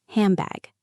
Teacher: An N sound is made at the front of the mouth. A B sound is made with the lips. It is hard to jump from N to B. · It is hard to jump from N to B. So, the N changes into an M because M is also made with the lips. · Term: assimilation